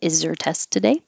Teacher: it's a yes no question so it'll go up